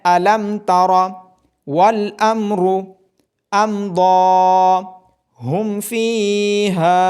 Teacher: اظہار میں میم ساکن کی آواز ظاہر ہوگی اور اظہار میں غنہ نہیں کیا جائے گا